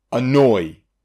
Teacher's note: two vowel sounds that slide from one to another but it's so close that it's considered the same syllable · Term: diphthong